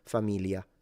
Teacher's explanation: So it's a Y familia. And in the north sometimes people simplify it into familia and it's basically just an L.